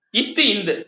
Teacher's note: இன்னு சரியாப்பா இட்டு இன் வந்து நாவின் நுனி அன்னத்தின் நுனி இத்து இந்து நாவின் நுனி மேல்வாய் பல்லின் அடி